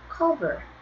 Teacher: 근데 단모음 단자음은 맞은데 역시 이거 cover 앞에 강세가 있어요